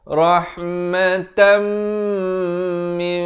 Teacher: dibacakan dengan ditukarkan bunyi nun kepada bunyi mim kadar panjang 2 harakat. Bibir itu sekadar bersentuhan sahaja, mim yang ringan ataupun hampir bersentuhan. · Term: iqlab